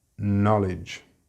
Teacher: in this word the pronunciation is na, with a very short vowel sound, knowledge. All words with DGE have this j sound.